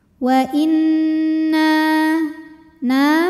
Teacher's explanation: lebih utama wa inna nunnya hukumnya ghunah musyaddadah karena Nun bertasydid cara bacanya dengung bunyi n tahan sampai ada suara masuk hidung · Alif didahului baris fathah maka huruf nun panjang dua harakat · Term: Thobi'i